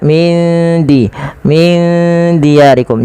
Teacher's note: huruf dal itu makhrajnya dari ujung lidah kita yang bertemu dengan ee perbatasan antara gigi atas dan gusinya